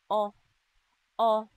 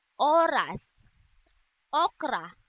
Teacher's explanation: ang letrang O naman na nasa ayos ng dila na gitna at sa bahagi ng dila na likod. Ito ay binibigas na o.